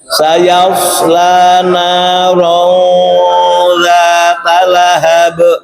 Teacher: Rong itu ditahan 2 harokat, dipanjangkan 2 harokat. Ronza, bukan ronda, ya.